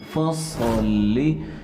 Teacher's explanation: صاد تو موٹا پڑھنا ہے، لیکن آگے لام ہے اسے ہم نے بالکل باریک پڑھنا ہے